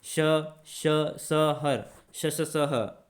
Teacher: उष्मीय तथा संघर्षी क्या होते हैं? तो साथियों ऐसे ऐसे वर्ण जिनको बोलने में जो है घर्षण उत्पन्न होता है, गर्म हवा निकलती है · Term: ऊष्मीय संघर्षी व्यंजन